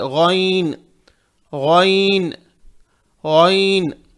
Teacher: یہ غائن کو موٹا پڑے، غین نہیں پڑھنا ہے